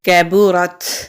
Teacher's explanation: کاف باریک والا کاف ہے، باریک پڑھیں گے، با کے اوپر پیش ہے، را کو تا سے ملائیں گے، را کو ہم موٹا پڑھیں گے کیونکہ را کے اوپر زبر ہے۔ تا باریک والا تا ہے، موٹا نہیں کریں گے۔